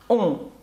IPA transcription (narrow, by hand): ɔ̃